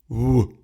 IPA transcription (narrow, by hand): β̞,